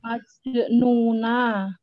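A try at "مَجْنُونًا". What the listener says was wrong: Tanwin. Majnunan ya.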